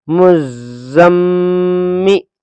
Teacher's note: اس میم پر تشدید ہے تو میم پر غنہ بھی ہوگا، میم اور نون پر اگر تشدید ہو تو غنہ ہوتا ہے